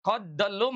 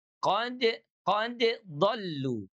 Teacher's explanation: Jadi dia mutabaidin dia tidak dibaca lebur tidak idgham ya. Jadi tidak qoddolu melainkan qod qodu.